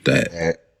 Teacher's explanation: This is a voiced dental stop. You could say that it's somewhere between d, a d sound, and a voiced the sound.